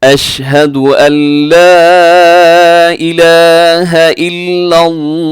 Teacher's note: आपने क्या करना है, अशहदु अल्ला इलाह, यहाँ पे लाम अलिफ ला है, यहाँ अल्लाह का नेम नहीं लिखा हुआ। अल्लाह का नेम होता तो हम उसे मोटा पढ़ते, लेकिन यहाँ पे बारीक रखेंगे